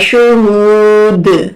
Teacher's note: یہاں پر دال جب ساکن ہوگا تو یہاں پر کلکلا ہوگا